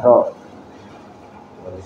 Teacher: huruf ro disifati dengan takrir atau bergetarnya ujung lidah